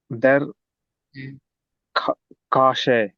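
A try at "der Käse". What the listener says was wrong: கேச. ஏ உம்லோட் இருக்குல்ல அது படிக்கணும். கேச.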